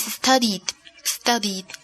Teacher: en el pasado pronunciamos la terminación ed como d, d, d. Okay, so the past tense of study is studied. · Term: consonante sonora